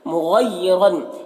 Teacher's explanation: مغیرن غین حروف مستعلیہ میں سے پر پڑھیں گے. را کے اوپر دو زبر ہے تو را کو پر پڑھیں گے